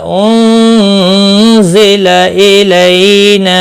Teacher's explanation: नून साकिन के बाद हुर्फ इख्फा का ज़ा आया, इख्फा हकीकी हुआ, गुन्ना के साथ पढ़ेंगे